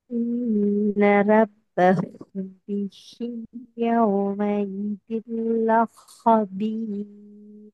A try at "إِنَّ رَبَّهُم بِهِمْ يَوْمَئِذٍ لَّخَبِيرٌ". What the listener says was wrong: நீங்க சத்து வச்சு ஓதுறீங்க. லஹபீர் சத்து வச்சு தான் ஓதுறீங்க. அதைத்தான் பிள்ளைன்னு சொல்லுவோம். லஹோ. லஹோ. லஹோ அதுக்கு மாறணும். நீங்க லாமோட சேர்க்க நேரம் ஷத்து வச்சு தான் ஓதுறீங்க. தனியாக ஓது நேரம் ஹா ஓதுறீங்க. இங்க பிரச்சனை வருவான்ல லாமோட சேர்ந்து தான் ஹா வருது. ஷத்து வச்சு வரல.